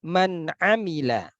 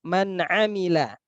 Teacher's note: Nun sukun berjumpa dengan ain. Nun makhrajnya adalah ujung lidah. Sedangkan ain itu adalah tengah lidah. Nah, ini sangat jauh sekali. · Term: mutabaidain